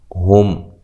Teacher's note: میم ساکن کو ہلانا نہیں ہے، میم ساکن کا اظہار ہے، غنہ نہیں کرنا۔ ہا کو اس کے مخرج سے نکالنا ہے واضح طور پہ۔